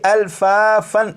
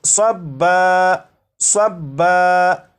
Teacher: تو جب یہاں پر وقف کریں گے تو دو زبر کو الف سے بدل دیں گے